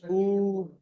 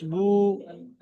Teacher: পেশের আওয়াজ সামনের দিকে যায়, আর ঠোঁট গোল হয়